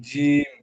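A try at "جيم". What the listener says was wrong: জিম টান নেন, জিম টান নেন ভাই। জিম কলিপ টান আছে। জিম একালিপ টান আছে। জিমে তিন আলিফ পরিমাণ টান আছে। এখানে তিন লেখা আছে, দেখছেন? এখানে তিন আলিফ টান দিয়ে পড়তে হবে জি।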